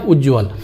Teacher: त के बाद ज झ हो तो त का ज हो जाता है।